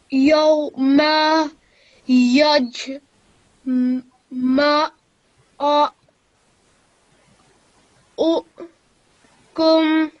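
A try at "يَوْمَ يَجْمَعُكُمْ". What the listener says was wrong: Good. So it's not meant to be given a jerk.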